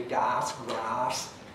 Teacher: In the southwest of England, you tend to get longish a for all these vowels.